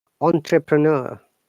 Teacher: in British English, we pronounce entrepreneur, no R sound, and the R U is longer U.